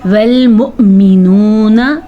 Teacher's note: حمزہ جھٹکے کے ساتھ پڑھا جائے گا کیونکہ حمزہ کے اوپر ساکن ہے